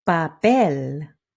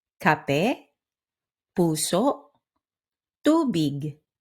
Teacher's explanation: When you say k, p, or t, keep it chill. No big puffs of air like in English. Think papel, papel, not papel.